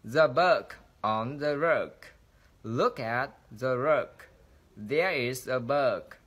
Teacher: thì các bạn thấy cái độ dài của nguyên âm đã được kéo dài